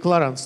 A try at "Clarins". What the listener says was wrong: Вы правильно произносите, если бы это был американский бренд. Но так как Clarins бренд французский, то немножечко по-другому произносится.